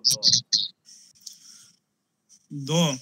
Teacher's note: ত বর্গের 3 নম্বর বর্ণ এবং একটি অল্প প্রাণ বর্ণ, ঘোষ বর্ণ